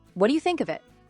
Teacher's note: Notice the gentle rise on it.